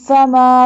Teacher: Do gunna on meme because it has tashdid.